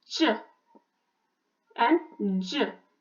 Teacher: The air stops for a while, and there is a sort of obstruction in release. So the sound begins with the stop and ends in fricative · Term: Affricates